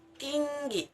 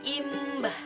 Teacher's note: Berada di depan dengan intonasi tinggi dan bentuk mulut tidak bundar.